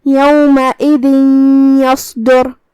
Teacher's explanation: تو ہم یہ تنوین کو یا میں داخل کر کے غنہ کے ساتھ اور تشدید کے ساتھ یہ حکم کو ادا کریں گے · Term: ادغام بغنہ